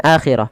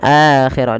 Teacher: tapi dibaca dengan akhirah dengan dipanjangkan dua harakat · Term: mad badal